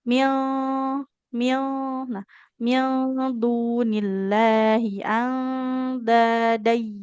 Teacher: Nah, ketika ikhfa huruf dal, kan huruf dal makronya ujung lidah menempel ke pangkal gigi seri atas. Jadi posisi ketika dengung itu lidahnya sudah di pangkal gigi.